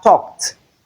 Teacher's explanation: The E D here is realized as T because of the C sound that comes before it. Hence we don't have the D sound here.